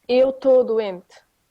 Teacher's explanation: Okay, so we drop the first syllable.